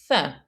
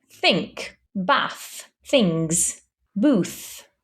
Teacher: This in English makes a th sound where you bring the tongue forward in between the teeth like this and you say th.